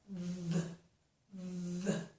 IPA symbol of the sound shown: ð